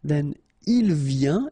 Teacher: Final S not pronounced, and then you get this yin sound · exactly the same sound, because final T here is not pronounced